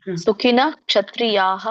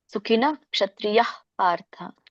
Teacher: ಹ ವಿಸರ್ಗ ಪೂರ್ಣವಾಗಿ ಬರೋದಿಲ್ಲ